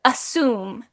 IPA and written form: əˈsium (assume)